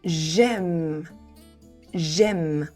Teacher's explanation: we're gonna drop the E of the je. So it's gonna be j'aime.